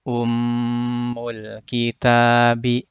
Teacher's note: Ada mim bertasydid. Harus dipanjangkan atau didengungkan.